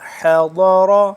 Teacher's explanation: حضر ضاد کو بھی موٹا اور را کو بھی موٹا پڑھیں گے